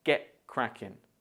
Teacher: In get cracking, the stress falls on the word cracking, so you should say crackin.